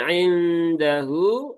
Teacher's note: nun sukun bertemu dal ini ikfa hakiki. Maka ada ghunahnya. Tunaikan ghunahnya jangan tergesa-gesa. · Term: ikhfa hakiki